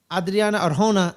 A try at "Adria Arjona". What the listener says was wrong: Well, her name's Adria Arjona. You're saying Adriana. It's not Adriana. It's Adria. There's no N in it.